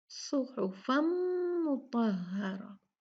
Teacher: अब हम क्या करेंगे, तनवीन को मीम से मिला देंगे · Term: इदगाम